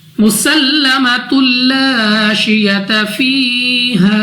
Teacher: سین کو پھر سیٹی والی آواز کے ساتھ سختی کے ساتھ ادا کرنا ہے